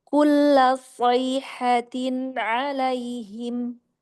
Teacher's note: Jadi huruf shadnya mau lebih angkat lagi isti'lanya. Itbaqnya mau lebih terasa.